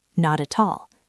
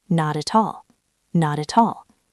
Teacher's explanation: Not ends in t. At starts with a vowel. That's a flap t.